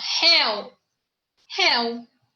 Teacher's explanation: Réu é um ditongo aberto. É um monossílabo ditongo aberto.